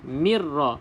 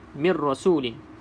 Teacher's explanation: Maka Tak bolehlah kita baca dengung Terus masuk dalam ra